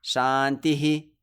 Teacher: if you see a Visarga at the end of a sutra or a mantra, like here, you should echo it.